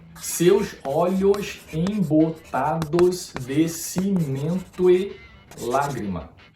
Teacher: a sílaba to puxa a vogal e se fundem em uma sílaba poética só. E a sílaba lá, então, é a 12ª do verso.